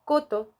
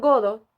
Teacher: en la palabra Coto los fonemas consonánticos son sordos en godo los fonemas son sonoros